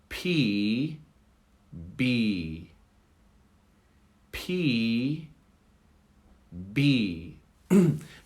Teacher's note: They both are produced from the front of the mouth with the lips touching, with a bit of pressure that you see, that the pressure releases the air.